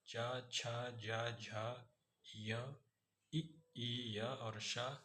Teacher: तालु और जीभ के मोटे वाले भाग के स्पर्श से बोले जाने वाले वर्ण तालव्य कहलाते हैं। इसमें च वर्ग च, छ, ज, झ, य, ई, य और श, ये जो सा होता है वो तालव्य सा होता है। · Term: तालव्य व्यंजन